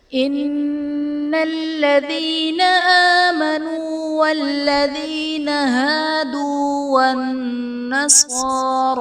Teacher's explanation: ان الذین میں نون مشدد ہے، یہاں پر غنہ کر کے پڑھیں گے۔ آمنو میں حمزہ پر کھڑا زبر ہے جو کہ الف مدہ کے قائم مقام ہے، اس لیے اسے ایک الف یعنی 2 حرکات کے برابر کھینچ کر پڑھیں گے۔